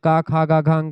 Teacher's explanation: देखिए क वर्ग को कंठ व्यंजन कहते हैं। कं कंठ से क ख ग घ ये कंठ से निकलता है।